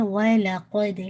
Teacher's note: وَلَقَدْ لام لائٹ رکھیے گا، قد دال پہ قلقلہ، قوف کو ہیوی رکھیے گا